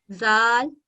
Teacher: زبان کو اوپر کے دونوں دانتوں سے لگا کر باریک پڑھا جاتا ہے۔